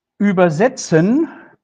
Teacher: if I stress the second syllable, then the meaning is translate. So here we have a meaning change.